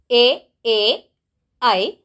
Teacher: ಈ ಅಕ್ಷರ ಹುಟ್ಟಲಿಕ್ಕೆ ಕಂಠ ಮತ್ತು ದವಡೆಯ ಸಹಾಯ ಬೇಕು. ಹಾಗಾಗಿ ಇವುಗಳನ್ನು ಕಂಠತಾಲು ಅಕ್ಷರಗಳು ಅಂತ ಕರಿತೇವೆ.